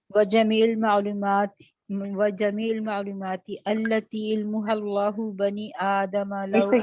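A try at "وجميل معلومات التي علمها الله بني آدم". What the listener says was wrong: رکیے، آہستہ پڑھیے، آپ بیچ میں سے ورڈز نہیں کھانے ہیں آپ نے، دوبارہ سے شروع کیجیے۔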